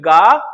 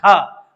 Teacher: घा में वायु महसूस हो रही है हाथ पे